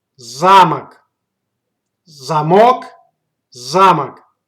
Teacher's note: The stress goes to the first syllable.